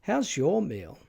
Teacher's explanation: it has a falling pitch Contour which begins on the word your